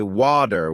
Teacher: In American English, people might say water with a D sound, while in British English it's often watu with a T sound.